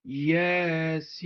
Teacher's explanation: Burada Yasin sözü müqatta hərflərdəndir və yə 2 səs miqdarında uzanır, sin isə 6 səs miqdarında uzadılır.